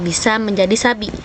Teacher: Karena secara fonologis bunyi B dan S bertukar posisi. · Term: metatesis